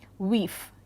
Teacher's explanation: the term wife was pronounced with a long E